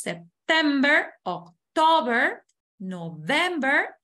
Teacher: en inglés la sílaba tónica es la segunda